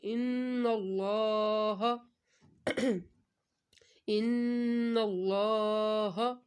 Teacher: ان کے اوپر ہم نے غنہ کرنا ہے کیونکہ ان کے اوپر تشدید ہے ، نون مشدد اور میم مشدد پر ہمیشہ غنہ ہوتا ہے،